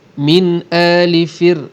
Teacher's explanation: ra di sini kita nipiskan kerana ra tadi mati, sebelumnya huruf berbaris bawah dan selepasnya bukan huruf tebal